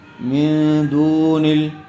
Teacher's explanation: میم نون زیر من. نون ساکن کے بعد حروف اخفا میں سے دال آئی ہوئی ہے، اس لیے غنّے کے ساتھ اخفا کر کے پڑھیں گے. دال واو پیش دو، نون لام زیر نل، من دون ال.